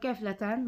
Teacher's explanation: və yaxud qəflət sözünə vurğu ikinci hecadadır. Amma qəflətən vurğu ilk hecanın üzərinə düşmüş olur.